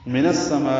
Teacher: من السماء نون کو سین سے ملائیں گے، ادغام شمسی ہوگا، ما پہ مد متصل ہے.